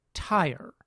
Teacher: it’s best to think of the vowel as a rhotic triphthong. In other words, it’s a single vowel that has three component parts.